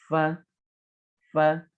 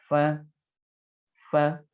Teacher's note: Nah, tapi kita tetap bisa gitu loh mengucapkan huruf F ini, hanya tidak refleks. Nah, ini caranya mempertemukan gigi seri atas dengan bibir bagian bawah